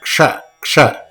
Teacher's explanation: When you say it together, it should come out strong. It's a Mahaprana letter.